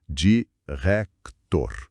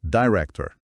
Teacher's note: Esse T é o que chamam de T aspirado em inglês. É comum no começo de sílaba tônica ou de palavra. · Esse T no meio é parece que tem um soprinho junto